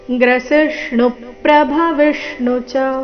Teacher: ಗ್ರೇಷ್ಣುನಲ್ಲಿನ ಣು ಮೇಲೆ ಆಘಾತ ಬರಬೇಕು ಕಾರಣ ಮುಂದಿನ ಶಬ್ದ ಪ್ರಭವಿ ವಿಷ್ಣು ಪ್ರ ಸಂಯುಕ್ತಕ್ಷರದೊಂದಿಗೆ ಪ್ರಾರಂಭ ಆಗ್ತಾ ಇದೆ